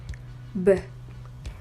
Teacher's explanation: The sound B is voice, meaning when we produce the sounds, the vocal folds vibrate